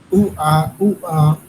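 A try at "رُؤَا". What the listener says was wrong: আরো গলার ভেতরে যাবে, আরো গলার ভেতরে যাবে।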